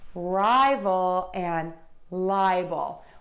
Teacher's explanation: we're going to stress syllable number one in both of these words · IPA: /ˈraɪvəl/ ; /ˈlaɪbəl/